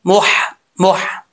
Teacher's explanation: میم کے بعد ہا جو ہے وہ بریک ہے، اس کا تعلق حلق کی طرف ہے، سینے کی طرف نہیں ہے